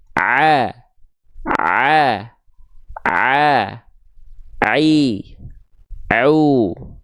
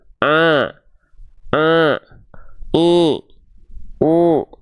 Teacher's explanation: banyak orang melafazkan huruf Ain suaranya Jadi sengau